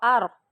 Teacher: را پہ جزم آ گئی لیکن پچھلے حرف پہ زبر ہے اور پیش ہے، اس صورت میں بھی را موٹی. لیکن اگر را کے اوپر جزم ہے اور پچھلے حرف کے نیچے زیر ہے تو را باریک، ٹھیک ہے.